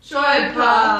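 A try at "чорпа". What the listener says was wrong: Chorpa. Nee, L. Chorpa. R.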